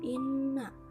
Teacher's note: cara membacanya dengan dengung serta ditahan tiga harokat · Selanjutnya ada inna, hukumnya gunnah, karena ada nun bertanda tasydid dan cara membacanya dengan dengung serta ditahan 3 harokat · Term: ghunnah